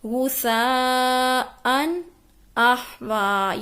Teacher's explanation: نون کی آواز کو کنٹینیو نہیں رکھنا، غنے کی طرح نہیں کرنا، یہاں پہ آواز کو واضح کرنا ہے، اس کو کہتے ہیں اظہار کرنا۔